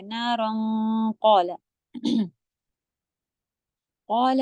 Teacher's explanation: نارن کا اخفا کریں گی قاف کی طرف تو ہیوی ہو جائے گا